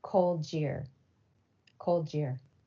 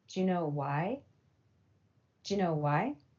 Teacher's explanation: coalescence with the voiced J as the initial sound in jeans